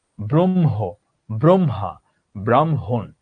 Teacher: অর্থাৎ হয়ের সাথে ম যুক্ত হলে তখন সেই মটা কি হয়? মটা মহাপ্রাণ হয়। তাহলে আমরা বলতে পারি এই হয় মতে সব সময় আমরা মহাপ্রাণ হিসেবে পাবো।